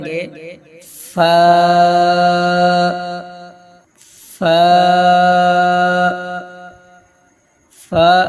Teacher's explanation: ادا کرتے وقت اوپر کے اگلے دونوں دانتوں کی نوک جب نیچے کے ہونٹ کے اندر والے حصہ سے لگے تو فا ادا ہوتا ہے